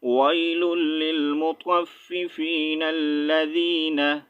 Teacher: اچھا یہاں پر اگر ہم سٹاپ نہیں کریں گے، ٹھیک ہے، رکیں گے نہیں، تو پھر پڑھیں گے نلذی، کیونکہ لام کے اوپر تشدید سائن ہے، ہم نے نون کو لام کے ساتھ جوائن کرنا ہے